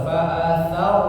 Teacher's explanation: Fa'atharna ya, ro-nya tebal. Fa'atharna, na-nya pendek, langsung disambung dengan bihi ya.